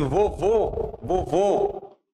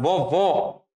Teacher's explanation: você é diferente você é um som fechado esse assim vovô vovô o som é fechado vovó o som é aberto